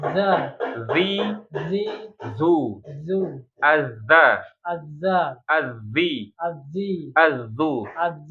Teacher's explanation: Ini ujung lidah ketemu dengan ujung gigi seri bagian atas dikeluarkan ya. Jadi bunyinya karakternya sama ada gesekan ya. · kalau dza itu terasa getaran di jakun ya pita suara